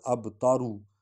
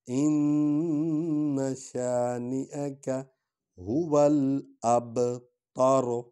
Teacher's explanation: ان شانئک هو الابتر، اصل میں تو ہے نا ابتارو، لیکن چونکہ یہاں وقف کرتے ہیں آیت ختم ہو جاتی ہے تو آخر میں جو را ہے اس پر جو پیش ہے اس کو نہیں پڑھا جاتا